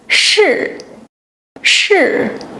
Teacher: Lift the tongue tip close to the front of the hard palate. Now, ensure you're pronouncing it with the falling tone